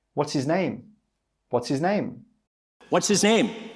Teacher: the speaker doesn't even say the h sound from the word his. He says, what's his name?